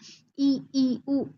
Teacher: इ ई उ ऊ में हमारा मुंह छोटा-छोटा खुलता है। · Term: संवृत स्वर